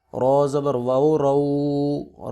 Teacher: رو کے اوپر زبر ہے اس لیے اس کو پر کر کے پڑھیں گے